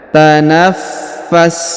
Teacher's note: huruf fa berharokat tasdid, maka kita tahan dan kita tekan.